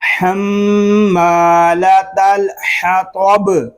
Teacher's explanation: یہاں صرف تو پر ہے تو اس کو ہم تاب نہیں پڑھیں گے، توب تو کو پر پڑھیں گے کیونکہ یہ حروف مستعلیہ میں سے ہے